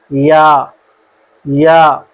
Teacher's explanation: حرف یا جب ہم پڑھتے ہیں زبان کا درمیان والا حصہ اوپر کے تالوں کی طرف اٹھتا ہے، یعنی زبان جب اٹھتی ہے تو حرف یا ادا ہوتا ہے۔